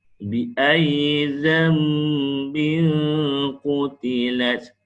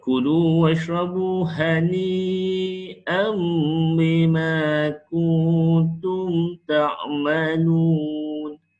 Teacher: apabila tanwin bertemu dengan ba, maka dia jadi hukum iqlab, masukkan huruf mim